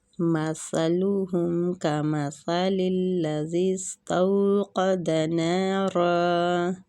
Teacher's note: سا نرمی والا حروف ہے، سیٹی کی آواز نہیں آنی چاہیے۔ كمثل الذي ادھر بھی سا ہے تو سا کی سین کی طرف نہیں اس کو لے کے جانا۔